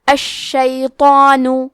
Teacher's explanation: کلمت الشیطان میں حرف شین پہ تشدید ہے تو ہمیں 2 حرف کے برابر شین کو پڑھنا ہے۔ تو حروف التفخیم میں سے ہے تو ہم تو کو موٹی آواز میں پڑھیں گے کیونکہ اس پہ کھڑا زبر ہے تو یہاں مد الف ہے۔ · مد الف میں پیچھے والے حرف کا حکم لیتے ہیں تفخیم میں اور ترقیق میں، تو کیونکہ اس کے پہلے حرف تو ہے تو ہمیں مد الف کو بھی بھاری آواز میں ادا کرنا ہے